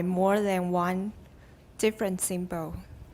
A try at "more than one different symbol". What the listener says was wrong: And watch the N. The first time I think you dropped an N. Try it again.